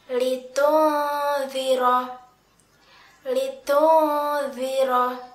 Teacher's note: Nun sukun di sini bertemu dengan huruf dzal, maka nun sukunnya masih terdengar dan disertai dengan samaran huruf dzal. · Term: ikhfa hakiki